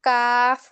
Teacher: জিহ্বার গোড়া হইতে একটু আগে বাড়িয়ে তার বরাবর উপরে তালুর সঙ্গে লাগিয়ে মধ্যখান পেঁচানো, কাফ।